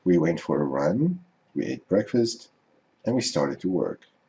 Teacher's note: Each item in the list goes up in intonation to show that there's more to come. The list isn't finished yet. Then, with the last item, the intonation goes down to show that the thought is complete. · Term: lists